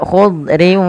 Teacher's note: Memasukkan tanwin kepada huruf waw, sehingga bukan lagi dibaca khudrin wa abqari, tapi khudriu sambil ditahan dengan gunnah sepanjang 2 harokat. Maka khudriu nah, baru dilepas.